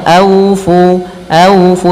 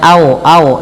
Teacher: adalah bacaan Lin lembut dalam pelafalannya aufu aufu jangan au au jangan pakai o tapi pakai u